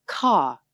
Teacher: the R-dropping style that says ka instead of car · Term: non-rhotic English